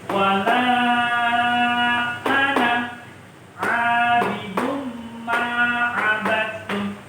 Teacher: Walaupun setelah huruf na ini terdapat alif, ini tidak boleh dibaca panjang. Jadi bacanya pendek.